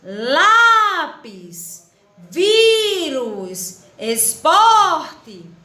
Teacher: todas as penúltimas sílabas são mais forte e portanto elas são palavras paroxítonas então a gente tem que